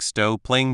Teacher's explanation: You don't need to say the G twice, stop playing sounds like Stow playing the P sound is said once